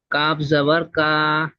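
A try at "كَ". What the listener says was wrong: সে কা টান হয়ে যাচ্ছে। কাপ জবর কা, মোটে টান হবে না।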